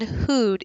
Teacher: the tongue has pulled back away from the front a little the tip has and the back of the tongue the bulk · back away from the front a little the tip has and the back of the tongue the bulk of the tongue has really raised to the back of the mouth